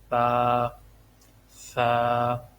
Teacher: تا کو آپ نے نرمی سے ادا کرنا ہے تاکہ یہ تا جو ہے یہ سین کے ساتھ مکس نہ ہو۔ سین میں سیٹی کی آواز آتی ہے، تا بالکل نرمی سے، تا، تا، جیم۔